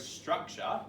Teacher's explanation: And then we've got the T, but it's actually making the Ch sound.